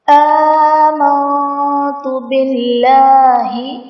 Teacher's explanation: باللہ میں اسم جلالت اللہ عز و جل کے لام سے پہلے زیر ہے، تو یہاں پر اسم جلالت اللہ عز و جل کے لام کو باریک پڑھیں گے۔ · آمنت میں نون ساکن کے بعد حرف اخفا ہے تا، تو یہاں پر ہم اخفا کریں گے، یعنی غنہ کر کے پڑھیں گے